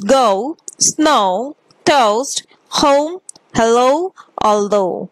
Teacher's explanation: the glide begins in the position for ah moving up and back towards o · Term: closing diphthongs ending in ow